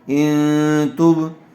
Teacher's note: نون ساکن کے بعد حروف اخفا میں سے تا آیا ہوا ہے، اس لیے غنّے کے ساتھ اخفا کر کے پڑھیں گے